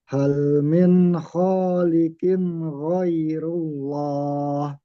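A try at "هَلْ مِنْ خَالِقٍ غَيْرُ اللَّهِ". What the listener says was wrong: Nah, sedikit mantul yang di awal. Yang ini enggak.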